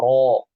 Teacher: Kalau huruf misalnya berharokat fathah, huruf tafkhim berharokat fathah, huruf ra berharokat fathah, maka dibaca tafkhim ro